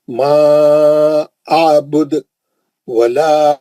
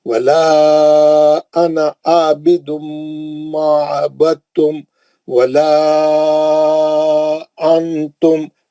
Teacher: چھوٹا مد ڈالا منفصل کا. 4 حرکت سے پڑھنا ہے.